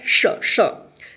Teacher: मूर्धन्य श और तालव्य श दोनों का सेम उच्चारण होता है, श, श। जीभ जो है ना तालु में जाकर सटेगा।